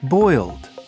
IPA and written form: bɔɪld (Boiled)